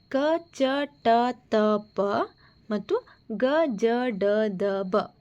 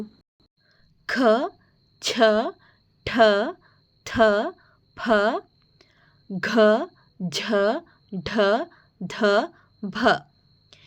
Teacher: ಹೆಚ್ಚು ಉಸಿರಿನ ಸಹಾಯ ಮತ್ತು ಹೆಚ್ಚು ಒತ್ತು ಕೊಟ್ಟು ಹೇಳುವಂತಹ ಅಕ್ಷರಗಳು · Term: ಮಹಾಪ್ರಾಣಾಕ್ಷರಗಳು